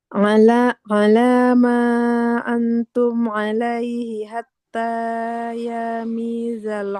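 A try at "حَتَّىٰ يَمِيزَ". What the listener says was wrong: Ya-nya nggak panjang.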